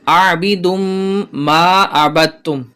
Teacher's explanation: عابدم دال کو میم سے ملائیں گے